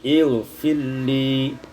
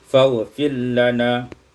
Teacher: idghamur ra fil lam, diidghamkan ra pada lam menjadi ilfilli.